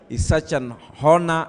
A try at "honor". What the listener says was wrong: The Starehe person in me just feels like telling you the H in honor is silent. Honor.